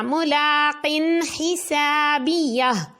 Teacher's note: دیکھیں اب 2 زیر کے بعد ہا ہے، حروف حلقی میں سے آئے تو غنہ نہیں کرنا